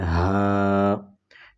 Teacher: حلق کے اس حصے سے ادا ہوتا ہے، یعنی حلق کا وہ حصہ جو سینے کی طرف ہے، اس سے ادا ہوتا ہے